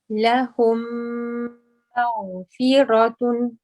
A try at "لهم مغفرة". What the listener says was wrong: Yes, just be careful when you join the meme and the ghain, you want to keep the meme not mag, but ma, mag, mag. لهم مغفرة.